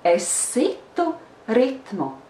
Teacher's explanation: when we pronounce these two words together you hear the S longer AC to ritmo because you are trying to pronounce the S